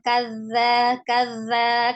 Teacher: ujung lidah harus bertemu dengan ujung gigi seri bagian atas ya. Keluarkan sedikit ujung lidahnya. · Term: huruf dzal